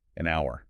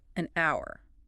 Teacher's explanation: But the H is silent. You don't hear it. The first sound is ow, a vowel sound